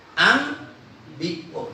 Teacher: membalik nun sukun atau tanwin menjadi mim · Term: iklab